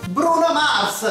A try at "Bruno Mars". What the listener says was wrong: Ah, you put the accent on the U.